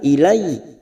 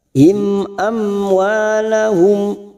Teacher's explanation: Dafa'tum ilaihim, ada fathah bertemu ya sukun huruf lain kita laburkan ilaihim, mim sukun bertemu hamzah idhar safawi dibaca jelas